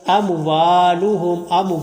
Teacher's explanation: لا تغنیہ، کوئی حرف لمبا نہیں کرنا، عنہم کوئی حرف لمبا نہیں، اموالہم، واؤ کو لمبا کریں گے تو واؤ کے اوپر زبر آگے الف ہے، واؤ مدہ کو لمبا کرنا ہے۔